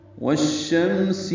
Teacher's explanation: والشمس، واو کو شین سے ملانا ہے، ادغام شمسی ہے